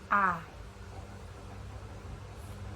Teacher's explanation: vokal rendah atau bawah yang dibentuk apabila rahang bawah diundurkan lagi sejauh-jauhnya